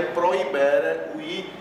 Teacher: Veja que o H em latim é mudo, não se faz aquele H aspirado, como às vezes tem em outras línguas, que às vezes as pessoas que vão pronunciar em latim, algumas pessoas fazem dessa forma. · o H está aí apenas figurando, ele não tem pronúncia